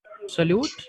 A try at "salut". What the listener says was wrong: Don't pronounce the T in the end. Salut.